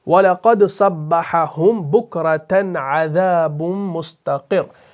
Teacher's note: मुस्तक़िर जो है असल में है मुस्तक़िर्रुन, रॉ के ऊपर दो पेश है, लेकिन वक्फ की सूरत में आप क्या करते हैं, दो पेश को सुकून के साथ तब्दील कर देते हैं। तो लेकिन आप देखते हैं कि जो ये वक्फ यहाँ पर हो गया, ये कौन सा वक्फ है, वक्फ बित तशदीद है, क्योंकि आखिरी वाला जो हरफ है ये तशदीद के साथ है।